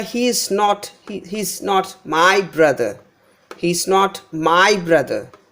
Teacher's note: so here my is given more importance it is stressed and the brother word is also stressed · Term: word stress in a sentence